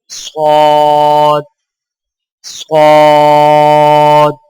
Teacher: زبان کی نوک کو سامنے والے نیچے کے دو دانتوں کے کناروں سے مضبوطی سے لگا کر اور زبان کے پچھلے حصے کو تالو کی طرف بلند کرتے ہوئے موٹی اور سیٹی جیسی آواز میں پڑھیں